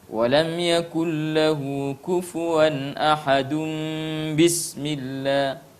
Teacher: suara nun sukun berubah menjadi suara mim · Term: iqlab